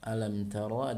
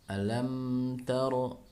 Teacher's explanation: mimnya dibaca jelas, sempurna huruf mimnya. Ya, tidak boleh ada dengung.